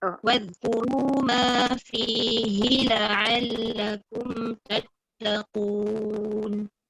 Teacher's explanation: Fihi tu, fi panjang, hi tak panjang.